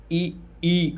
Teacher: इ ई का तालु है। तालव्य कहा जाता है।